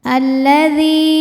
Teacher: Sebab ada ya sukun yang sebelumnya baris kasrah. Maka dibaca panjang dalnya dua harakat. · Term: mad thobi'i zohiri